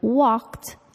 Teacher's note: The ed verb ending sounds like a t, walked, even though it ends in the letter D.